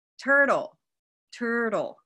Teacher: turtle is stressed in the first syllable